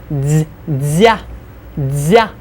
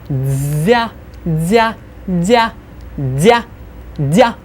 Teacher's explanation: You get that z glide in there, and it's really soft, really intense.